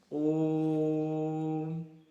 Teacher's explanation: ओ का उच्चारण यहां लगभग 3 बार 3 चक्रों में हो रहा है। ओ की 3 आवृत्तियां हो रही। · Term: प्लुत स्वर